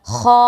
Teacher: تھوڑا سا کھینچیں گے اور پر پڑھیں گے یعنی موٹا کریں گے۔ خا۔